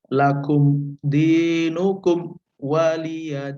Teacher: setelah mim itu tidak ada dengungan, tidak samar-samar juga, ya, tidak idgham juga, ya, tapi jelas, langsung diem, langsung stop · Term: idhar syafawi